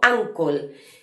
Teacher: aunque comienza con la letra u escrito, lo pronunciamos como una especie de a